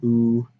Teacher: For the ooh, it's closed. And here we've got a rounding of the lips, tightening and rounding